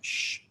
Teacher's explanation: The accent mark over an S indicates a deep SH sound that comes from the back of one's mouth, as opposed to a regular SH sound towards the front of one's mouth